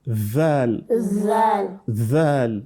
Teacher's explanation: You let your tongue to come in between the upper and lower incisors.